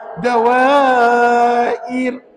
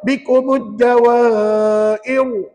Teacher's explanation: Saya senyum, saya lebarkan bibir. Bermakna ra itu nipis.